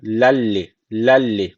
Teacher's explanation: devam edelimi tenvinden Sonra lam gelmiş idgam Bilun ne tecvidi var Şu leyi şeddeli gibi okuyoruz